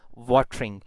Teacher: Even in watering, we have a consonant just before R, and we have a vowel E just after R, and the first syllable is stressed syllable, and the second syllable, which is starting from syllabic consonant, it is unstressed syllable. So the conditions are meeting, and this is syllabic R.